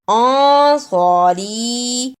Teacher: نون ساکن کو تھوڑی دیر ناک میں چھپانا ہے ، انصاری، اور چھوٹی مد کو بھی ادا کرنا ہے، انصاری، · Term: اخفا